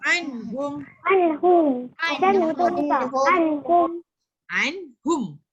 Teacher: jangan dengung, baca macam biasa je anhum. Jangan tekan lama tak boleh, tu dengung dah jadinya. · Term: izhar halki